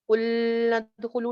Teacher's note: لام کی آواز چلتی نہیں ہے، لام متوسط میں سے ہے جی لیکن اس کی آواز چلتی نہیں